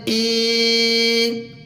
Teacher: حمزہ یا زیر ای، اب یہاں پر ہم حمزہ کو تھوڑا سا کھینچ کے پڑھیں گے، اس لیے کہ یہ یا مدہ ہے